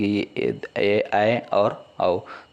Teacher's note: ऐसे स्वर जिनके उच्चारण में मांसपेशियों में अधिक तनाव रहता है उसे दी स्वर कहते हैं। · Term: दीर्घ